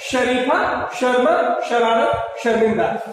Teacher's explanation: तालव्य स तालू के पास जो श निकलता है वो होता है